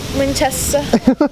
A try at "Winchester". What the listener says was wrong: That's not a Winchester accent. Winchester's more in the front of your mouth.